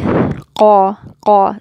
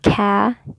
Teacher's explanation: So notice it's not ka, because it's not a light letter. It's heavy.